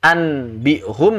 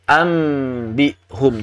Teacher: Nah, yang jadi masalah kalau misalnya kita ingin membaca nun sakinah dan tanwin bertemu dengan ba sambil merapatkan bibir, ya jelas di situ tidak mungkin lagi muncul suara nun sakinah dan tanwin. Yang ada menjadi suara mim. Anbihum menjadi ambihum.